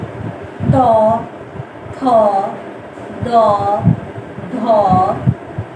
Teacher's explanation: দাঁতের গোড়া স্পর্শ করে যে সব ধ্বনিগুলো বর্ণগুলো উচ্চারিত হয় সেগুলোকে দন্তবর্ণ বলে।